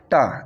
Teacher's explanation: ट का जो उच्चारण है वह मूर्धन्य से होता है